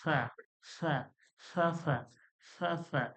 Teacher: সামান্য হাওয়াটা সামনের দিকে, হাওয়াটা উচ্চারণ হাওয়ার দিয়ে উচ্চারণ হবে। জিহ্বার আগাটা যখন আমি উপরের দাঁতের আগায় লাগিয়ে দেব, দিয়ে আমি বলতে গেলেই দেখবেন হাওয়ার মতো উচ্চারণ বেরোবে।